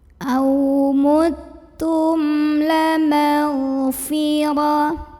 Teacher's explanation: Karena mim sukunnya menghadapi huruf selain mim dan ba yaitu huruf lam. Maka cara baca mim sukun ini adalah dibaca idhar atau jelas bunyi M-nya, tidak ditahan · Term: idhar syafawi